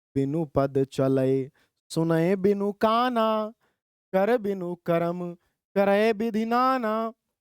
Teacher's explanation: अब अंत में ही केवल बड़ा की मात्रा आ रही है और पूरी लाइन में ह्रस्व स्वर है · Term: दीर्घ स्वर